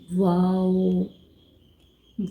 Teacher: واو جب دونوں ہونٹوں کو گول کرنے سے ادا ہوتا ہے۔